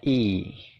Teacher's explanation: bacanya itu i, nyengir gitu ya, jadi agak panjang. Suaranya adalah i, kayak gitu ya.